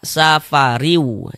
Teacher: Ini bunyi tanwinnya dimasukkan ke huruf wau. · Ini bunyi tanwinnya dimasukkan ke huruf waw. Kita baca safariu, jangan dibaca safarin, jangan, tapi dibaca safariu, masuk melebur ke huruf waw. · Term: idgham bighunah, idgham bi gunnah